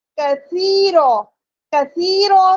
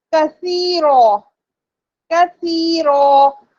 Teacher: کثیرو میں سا موجود ہے جس میں سیٹی کی آواز نہیں آئے گی